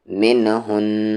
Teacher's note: یہاں پر غنہ کریں گے، نون پہ تشدید ہے